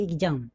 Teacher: यहाँ पे एक्स का जो उच्चारण लग रहा है वो आधा ग और ज हो गया